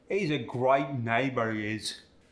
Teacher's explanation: The long A sound, as in neighbor and great, get the I sound.